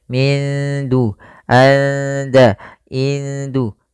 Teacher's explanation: nunnya disamarkan ke DA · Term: Ikhfa